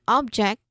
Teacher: No, that's the noun version of the word meaning it's a thing, it's an item or something that you can touch. That's object. Okay, we stress on the first syllable here.